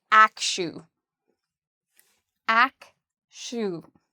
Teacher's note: The second part, even though it's spelled with a TU, is pronounced like an SHU.